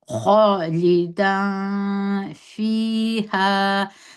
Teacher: خالدان فیها، ستاسې چې پام وي خا دروند توری دی، دا به په ډکه خوله باندې کش کړي، پر خا باندې زور دی، الف مده دی.